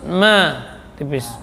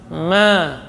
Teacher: Ma dari dua bibir bagian dalamnya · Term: mim